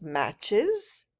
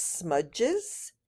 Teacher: we use the is sound and these verbs will have an extra syllable